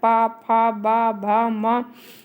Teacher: पा वर्ग के अंतर्गत पा, फा, बा, भा, मा ओष्ठ्य वर्ण कहलाते हैं।